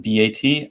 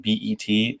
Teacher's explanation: the vowel in bat is more open. And the vowel in bet is the tongue is slightly closer to the roof of the mouth